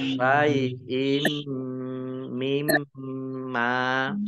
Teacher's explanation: Mim tasdid ya dibaca gunah atau mendengung ditahan 2 harokat. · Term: idgham bi gunnah